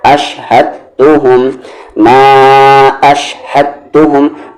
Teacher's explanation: दाल silent हो गया क्योंकि जज़म के बाद तशदीद है।